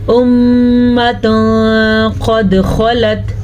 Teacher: याद रखें, नून साकिन या तनवीन के बाद हरूफ इख्फा में से कोई हर्फ आ जाए तो नून साकिन और तनवीन की आवाज़ को छुपे हुए गुन्ने के साथ पढ़ते हैं